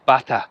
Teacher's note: Here in Spain, they pronounce water bata, so it's like a B sound.